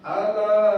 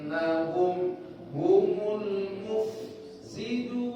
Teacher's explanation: Alanya, lanya panjangnya 4 atau 5. 4 atau 5 harokat. Ala, ada bendera itu panjangnya 4 atau 5.